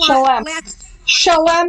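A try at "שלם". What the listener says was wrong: Or shalem. I prefer the A, the long A sound.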